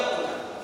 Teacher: نون غنہ کو کھینچ کر کے نہیں ادا کیا جائے گا